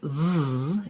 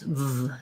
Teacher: The V sound, v, is made with my upper teeth and my lower lip. So teeth plus lip, and the sound continues.